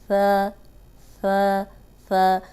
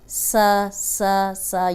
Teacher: ثا جو ہے اس میں سیٹی کی آواز نہیں آئے۔ اوپر سامنے کے جو 2 دانت ہیں ان کے اندرونی کنارے پہ زبان رکھیں، ثا ثا ثا۔ اب سا سا سا یہ ساؤنڈ نہیں آنی چاہیے۔